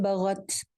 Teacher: فَإِن بغت، بغت غائن موٹا ہے، تا کو ہلانا نہیں ہے، تا ویسے تو ساکن ہے، تا کے اوپر آپ کا سانس ہلکا سا چلنا چاہیے